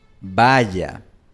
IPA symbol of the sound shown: ʝ